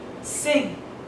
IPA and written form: sɪŋ (sing)